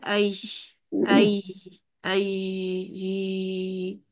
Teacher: جیم اور شین کے درمیانی حالت جیسی آواز